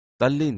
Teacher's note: એટલે કે દંત્ય વ્યંજનો ત થ દ ધ ન એ વ્યંજનો સાથે લ વ્યંજન આવે તો દંત્ય વ્યંજનનો લ થાય છે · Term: વ્યંજન સંધિ